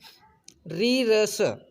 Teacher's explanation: री, र, स बोला जाता है मूर्धन्य से